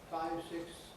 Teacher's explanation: the th drops out altogether and you have a long S